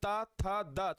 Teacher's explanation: जीव दंत को टच कर रही है तो दंत हो जाएगा व्यंजन के कितने प्रकार होते हैं व्यंजन के तीन प्रकार होते · जब हम बोलते हैं ता था दा तो जीव दंत को टच कर रही है तो दंत हो जाएगा।